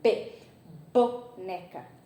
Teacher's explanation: Então, os lábios se juntam. E aí, o ar fica preso. Mas aí, para que o ar continue passado, ele precisa romper a união dos lábios. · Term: fonema oclusivo